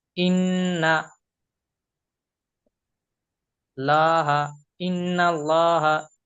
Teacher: আল্লাহ শব্দের আগে লামের উপরে জবর এসছে। তো সেইজন্য এই লামটাকে পুর করে অর্থাৎ ল পড়তে হবে।